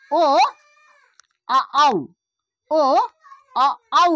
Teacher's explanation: ओ आ औ के उच्चारण स्थान अछि कंठ एवं ओष्ठ